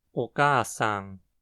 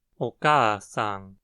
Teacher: A primeira sílaba precisa também ter uma frequência baixa por causa da regra de as 2 primeiras sílabas precisarem ter frequências diferentes.